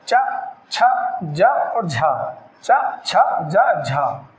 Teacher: स्पर्श संघर्षी वायु मुख से भी टकराए और संघर्ष करती हुई बाहर निकले, जैसे च, छ, ज और झ, च, छ, ज, झ।